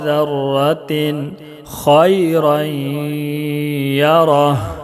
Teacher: इसमें इजहार हलक़ी होगा, इसलिए कि तनवीन के बाद हुरूफ हलक़ी के 6 हरफों में से खा है।